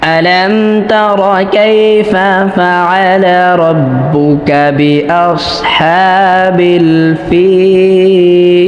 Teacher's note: এখানে ফাতে আমরা 3 আলিফ মাদ করে তারপর লামে ওয়াকফ করব, কেননা এখানে ইয়াটা মাদের হরফ হয়েছে।